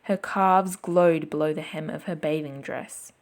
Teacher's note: guides readers to pronounce it with a very particular rhythm and place greater stress on the word glowed